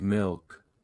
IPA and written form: mɪlk (milk)